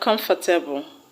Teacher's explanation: the stress will not change its position. It will still be on the first syllable